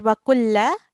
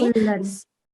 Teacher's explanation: we will be doing a slight nasal sound here because the next letter is not huruful halki